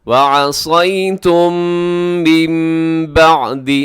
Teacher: وَعَصَيْتُمْ مِن بَعْدِ، وَعَصَيْتُمْ کے آخر میں میم ساکن، میم ساکن کے بعد میم ہے، ادغام شفوی ہے، دونوں میم کو ملا کے پڑھیں گے غننے کے ساتھ